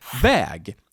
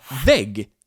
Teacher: väg, road, with a long ä, we also have vägg, which means wall, with a short ä and a long g